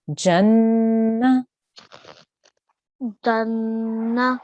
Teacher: you make the nasal sound for 2 seconds, and then you say the noon with the fatha, which is na.